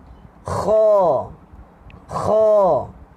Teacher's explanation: Huruf kha lagi dekat dengan anak tekak. Okey, dia cuma atas sikit saja.